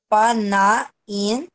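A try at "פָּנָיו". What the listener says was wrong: Panaiv. é um vav. A gente pensa que é um nun, mas é um vav, né? Um nun sufixo não.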